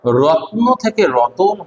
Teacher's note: র এবং ত এর মাঝখানে একটা অ এসেছে, এই যে স্বরধ্বনি, এটা মাঝখানে এসেছে, তাই এর নাম হচ্ছে মধ্য স্বরাগম।